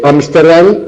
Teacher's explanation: Ámsterdam es un topónimo, un nombre de lugar, y la pronunciación más común es esdrújula, y entonces se le pone acento.